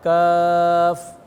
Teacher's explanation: آپ اس کے ہجے کے اندر یہ تو نہیں پڑھیں گے نا کاف الف زبر کھے ہے، الف مدہ ہے نا، الف مدہ کو سیدھا ادا کریں گے تو یہ کیف نہیں ہے بلکہ کیا ہے؟ کاف